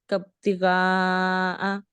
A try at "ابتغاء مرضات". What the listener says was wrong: تھوڑا سا غین کو آپ موٹا کرو.